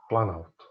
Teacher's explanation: A composição da palavra planalto se deu pela aglutinação de plano e alto. Então a gente perdeu o O, virou planalto.